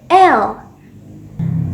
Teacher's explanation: ketika mengucapkan l tidak ada getarannya bunyi ini halus hanya sentuhan lidah tanpa getaran Nah jadi ingat ya cobat cerdas bahwasanya ketika mengucapkan R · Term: bunyi l